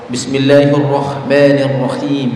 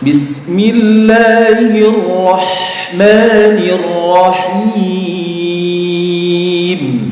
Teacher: ha itu ditenggorokan paling tengah ya dan tidak ada suara rakhawahnya